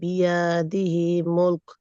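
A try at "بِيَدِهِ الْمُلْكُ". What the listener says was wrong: বিয়াদি হিল মুলক, বিয়াদি হিল, হি থেকে লামে যাবে।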